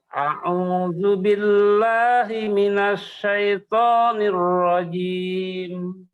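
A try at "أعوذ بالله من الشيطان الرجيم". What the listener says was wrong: Nah, ainnya diperdalam.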